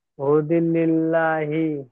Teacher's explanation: আল্লাহ শব্দের লামকে বারিক অর্থাৎ লা পড়তে হয়